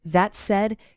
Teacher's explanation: The way a native speaker uses it, there's no stress on any particular word. It's smooth.